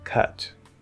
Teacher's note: if you are speaking more slowly and or more clearly you're enunciating more you're probably going to hit more that upside down v sound